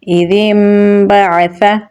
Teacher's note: نون ساکن کے بعد با ہے تو یہاں پر ہم اقلاب کریں گے، نون کو میم میں تبدیل کر دیں گے، عین کو گلے کے درمیان والے حصے سے نکالیں گے، فا کو نرمی سے پڑھیں گے تو پڑھا جائے گا إذ انبعث۔